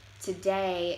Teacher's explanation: speakers put the emphasis on the end of the word and in Chicano English the emphasis is the beginning of the word so it would sound more like today instead of today instead